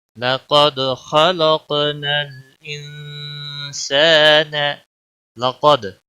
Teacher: قاف موٹا پڑا جائے گا، دال پہ قلقلہ ہوگا، خا بھی موٹا پڑا جائے گا، قاف بھی موٹا پڑا جائے گا اور اس کے اوپر قلقلہ بھی ہوگا.